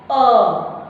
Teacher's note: मैंने स्वर अ का उच्चारण किया तो मैंने गले से इसका उच्चारण किया